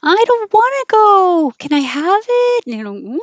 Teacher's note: whines the verb meaning complains and the action of whining is stretching the vowels really long like kids do when they want something I don't want to go can I have it really stretchy